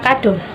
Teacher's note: vokal yang terbentuk dengan lidah diangkat dalam ketinggian sepertiga di bawah vokal tertutup, seperti kata E pada kata enak dan O pada kata kado. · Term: vokal semi tertutup